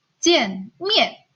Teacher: di bagian suku kata pertama nada keempatnya tidak perlu dibaca dengan penuh